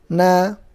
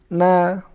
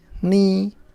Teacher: Selain di ujung lidah, makhraj nun juga keluar dari rongga hidung.